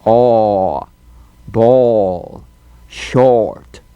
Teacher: The tendency is to close down on this vowel so it comes out more like O or instead of a well-defined aw.